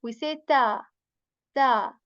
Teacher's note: Tip of the tongue again touches the back part of your upper frontal teeth. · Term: ta letter